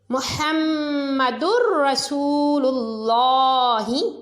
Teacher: اس میں آپ دیکھیں کہ دال کے بعد را حروف یرملون میں سے ہے، دال کے اوپر 2 پیش کی تنوین ہے تو اس کو را سے ملایا اور غنہ کے بغیر پڑھا، کیونکہ را اور لام میں غنہ نہیں کیا جاتا۔ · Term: ادغام بلا غنہ